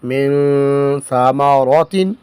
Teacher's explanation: نون ساکن کے بعد حروف اخفا میں سے سا آیا ہے تو یہاں پر اخفا کریں گے، یعنی غنہ کریں گے